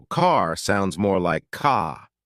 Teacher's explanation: British accent tends to soften the R